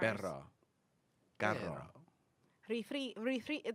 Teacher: you have to roll your R to get the right pronunciation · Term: rolling R's